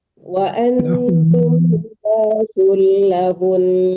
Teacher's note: Nah, itu kan nun itu gunah ya, tasdid itu nun gunah. Jadi kalaupun kita berhenti tetap dengungnya dipakai ya.